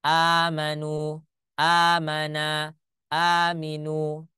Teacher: huruf hamzah yang bertemu akhirnya dijadikanlah Hamzah bertemu dengan Hamzah ini digabungkan ya jadi hamzahnya cuma satu Tetapi dia ditambah panjang saja bacaannya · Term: mad badal